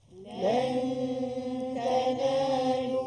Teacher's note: Ikhfa haqiqi. Bacaan dia dengung dua harakat. Dengung dua harakat.